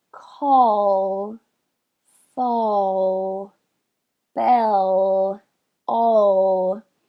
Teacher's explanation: Para vocês produzirem o dark L, a ponta da língua ainda sobe em direção ao alvéolo, mas ela quase nem encosta. E aí o que acontece é que a parte de trás vira como se fosse uma colher.